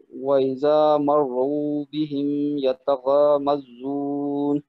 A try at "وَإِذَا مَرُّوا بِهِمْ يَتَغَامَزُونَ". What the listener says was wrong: صحیح ہے، یہ جو مد عارض ہم جب کہتے ہیں نا تو پھر اس کو تھوڑا سا زیادہ لمبا کرنے کی کوشش کیا کریں۔